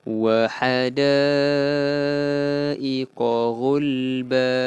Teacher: Da panjangnya berapa? Panjangnya 4 ataupun 5 harakat. Dipanggil mad wajib muttasil.